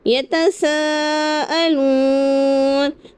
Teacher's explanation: نون پر جو زبر ہے تو وقف کی حالت میں ہم اسے ساکن کر دیے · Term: مد عارض